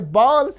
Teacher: they don't have the phone va. So what do they do? They replace it with ba.